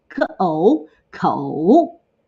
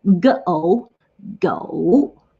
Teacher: they're both the third tone, the falling rising tone